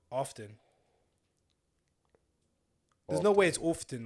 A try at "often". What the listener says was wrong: Often. The T's not pronounced.